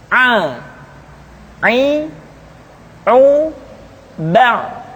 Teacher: Selanjutnya pengucapan huruf A dikeluarkan dari tengah-tengah tenggorokan seperti kita mengucapkan huruf H. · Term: huruf Ain